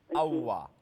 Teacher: দুই ঠোঁটের গোল রাখিয়া রাখিয়া আর মিলে না দুই ঠোঁট মিলবো না